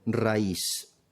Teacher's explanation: En la palabra raíz, esa I suena fuerte, no es una I débil. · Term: I acentuada